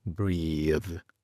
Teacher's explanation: Después tenemos breathe, breathe, donde la lengua vibra. Es la misma posición de la lengua como una Z, pero vibrando.